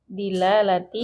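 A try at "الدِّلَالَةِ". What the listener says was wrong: Ada alif lam di situ. Baca dulu. Ad-dilalah.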